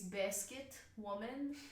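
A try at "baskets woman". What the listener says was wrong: Baskets. There's an S. There's an S. Basket. Baskets. You say the S in the middle. You say the S in the middle of it. I don't understand why you can't pronounce the S at the end of it.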